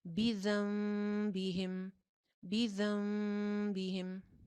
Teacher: نون کی آواز جو تھی وہ میم میں چینج ہو گئی تھی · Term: اقلاب